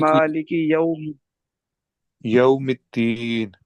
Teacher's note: अगर वाव पढ़ते हुए होंठों को गोल कर देंगे तो मारूफ पढ़ा जाएगा, मजहूल नहीं पढ़ा।